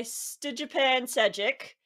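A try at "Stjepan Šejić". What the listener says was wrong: I think it's Stefan, by the way. The J is silent.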